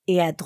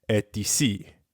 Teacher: you don't normally pronounce the final letter t instead you just say e unless the word that comes after e starts with a vowel